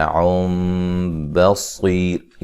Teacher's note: یہاں نون تنوین کا اقلاب ہے، ٹھیک ہے، نون کو میم سے بدل کے پڑھتے ہیں۔ صاد کو موٹا ادا کریں گے۔